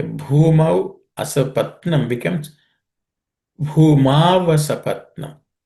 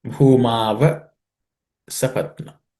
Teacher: Okay, Mau plus A becomes Ava. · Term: sandhi